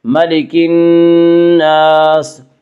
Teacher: الف مدہ کو 1 الف کے برابر کھینچ کر پڑھیں گے۔